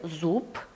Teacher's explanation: в слове «зуб» звонкое «б» звучит как «п» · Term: оглушаться